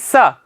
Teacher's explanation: दंत होता है। स आप जीहवा से बोल के देखेंगे तो आपकी जीवा दांतों से स्पर्श करेगी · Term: दंत्य सकार